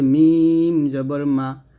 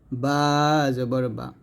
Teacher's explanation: মিম দুই ঠোঁট মিল করে বাও দুই ঠোঁট মিল করে তবে মিম দুই ঠোঁটের শুকনো অংশে মিলবে আর বা দুই ঠোঁটের ভিজা অংশে মিলবে